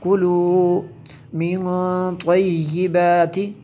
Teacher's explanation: یہاں پہ اخفا ہے، نون ساکن کے بعد حروف اخفا میں سے ہے۔